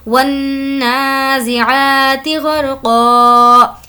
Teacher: नून पर यहाँ पर कुछ देर आवाज़ को रोकेंगे क्योंकि नून पर तजदीद है तो गुन्ना होगा। वन्नाज़िआती, आ को खींच कर पढ़ेंगे क्योंकि खड़ा ज़बर है।